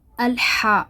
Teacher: یہ جو ہا ہے یہ حلق سے ادا کرنی پڑتی ہے۔ ہا جیسا کہ آپ جانتے ہیں ہا جب آپ سانس لیں گے تو آپ کا جو حلق ہے، جو حلق سے ایک دم سے صاف ستھری سی آواز نکلتی ہے، ہا۔